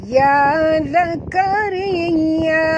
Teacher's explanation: Ra sini ra tarqiq, jangan tebal, ra tipis ya. Dan kita henjut pada ya kerana di atas ya ada tasydid